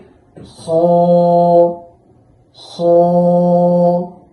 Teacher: এই খ হরফটি উচ্চারণ হবে হলকের শেষ ভাগ হতে। এই শেষ ভাগ হতে খ খ এভাবে উচ্চারণ করতে হয়।